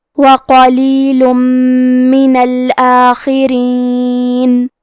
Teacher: کلمت الآخرین میں حرف الخا ہے. خا کی ادائیگی حلق کے اوپر والے حصے سے ہے. خا حروف التفخیم میں سے ہے تو ہم یہ حرف کو موٹی آواز میں پڑھیں گے، اور کیونکہ خا کے نیچے زیر ہے تو ہمیں زیر کو ظاہر کرنا ہے. · حرف را کے نیچے زیر ہے تو یہاں را کا حکم ہے ترقیق، لہذا ہمیں حرف را کو پتلی آواز میں پڑھنا ہے